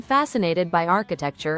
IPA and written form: ˈfæs.ən.eɪ.tɪd baɪ ˈɑː.kɪ.tek.tʃər (Fascinated by architecture)